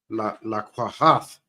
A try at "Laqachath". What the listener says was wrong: Now, it's not like ha, it's cha. You got to put a little bit of a cha-cha in it. Laqachath.